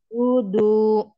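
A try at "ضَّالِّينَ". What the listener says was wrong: Nah, kasrohnya tadi juga masih ini ya. Li. Jadi enggak ini. Enggak tebal. Li. Coba dinaikkan. Pangkal lidahnya ini harus naik.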